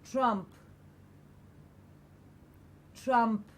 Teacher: it's a plosive so there has to be a little bit of air coming out in the end little a little gush of air coming out at the end